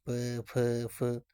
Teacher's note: जब दोनों ओष्ठों द्वारा श्वास का जो है वो अवरोध होता है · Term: ओष्ठ व्यंजन